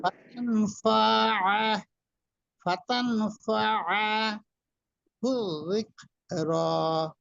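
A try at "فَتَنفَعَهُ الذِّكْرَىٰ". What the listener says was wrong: এই যে ফা টান দিয়েছেন, এখানে টান দেওয়া যাবে না। ফাতানফাআহু যিকর।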